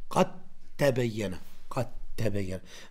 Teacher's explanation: Qad, normalerweise du sagst Qad tabayyana. Aber weil Dal und Ta gleichen Entstehungsort haben, dann macht man hier Assimilation.